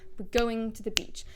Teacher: we're stressing go in going and Beach because these are the two main stresses everything else is reduced it gets shorter uh to the we don't say two there but to the